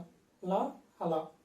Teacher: దంతాల దగ్గరలో టచ్ చేసి పక్కన నుంచి గాలిని వదులుతున్నాం కాబట్టి పార్శ్వికములు అంటారు. పార్శ్వము అంటే పక్క అని అర్థం. · వీటిని పలికేటప్పుడు నాలుక అంచుల దగ్గర నుంచి గాలి రిలీజ్ చేస్తున్నాం. అందుకే వాటిని పార్శ్వికములు అంటారు.